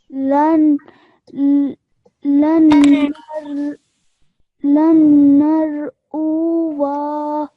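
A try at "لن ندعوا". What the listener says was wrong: So remember, because this is alif zaida, we're not going to read this final alif.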